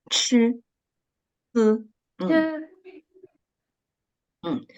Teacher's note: And when we read the two initials, ch and s, there ch, should be a strong air flow out of our mouths